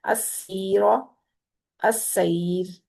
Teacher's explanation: ساکن را کو پڑھتے ہوئے ہونٹوں کو چیرتے جائیں گے تو آٹومیٹکلی باریک آواز نکلے گی، اگر ہونٹ چیریں گے نہیں تو آواز موٹی ہو جائے گی، ٹھیک ہے، تو یہ خیال کرنا ہے آپ لوگوں نے۔